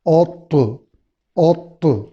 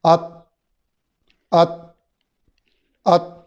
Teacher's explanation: اوت، اوت یہ ہو گیا تا، ات، ات، ات، یعنی طوا اور تا کا فرق کیا ہے؟ طوا موٹا ہے، طوا میں قلقلہ ہے، تا باریک ہے اور تا میں قلقلہ نہیں ہے۔